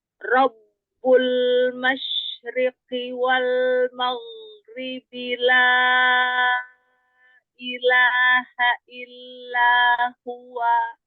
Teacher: Ro fathah dibaca tafkhim. Rob langsung angkat pangkal lidah.